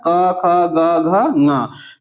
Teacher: तो क वर्ग में आने वाले जो जितने भी वर्ण होते हैं वो कहां से बोले जाते हैं? कंठ से बोले जाते हैं।